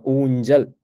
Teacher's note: இன மெல்லினத்தின் முன் இந்த இடத்துல இஞ்சுன்றது இன மெல்லினம். ஊஞ்சல் இந்த இடத்துல அந்த சகரம் வந்து ஜான்னு ஒலிக்குது.